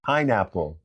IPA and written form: ˈpaɪnˌæp.əl (PINEAPPLE)